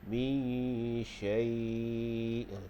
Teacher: Kalau kita waqaf situ, kita panjang 6 harakat sebab dia jadi mat lin.